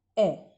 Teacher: तो बेटा अग्रभाग जो होता है, अग्र स्वर, इसमें क्या होता है कि हमारी जीभ का जो अगला भाग होता है वो क्रियाशील रहता है, मध्य में हमारी जीभ का मध्य भाग क्रियाशील रहता है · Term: मध्य स्वर